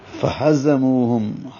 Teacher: فہزموہم، ہا کو اقصى حلق سے نکالنا ہے، زا کو زور سے نکالنا ہے، منہ واو مدہ ہے، 2 حرکات لمبا کریں گے، ہم میم ساکن کے بعد با ہے، اخفاء شفوی ہوگا، ہم بھی پڑھیں گے۔